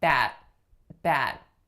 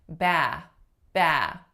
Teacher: Because in bat, I am bringing my tongue up and stopping my airflow, you're going to hear a sudden nothingness. Versus when I say ba, I'm slowly letting my ah sound die out. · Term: unreleased T